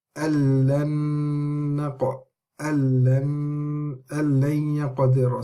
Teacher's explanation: the noon gets fully assimilated into the lam, and the lam is going directly into the ya because the noon, the ghunna, goes over here, okay.